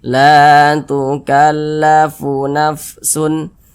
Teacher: huruf alif pasangannya tanda baca fathah sehingga huruf sebelumnya dibaca panjang sehingganya la dibaca panjang Mad thi'i panjangnya dua harakat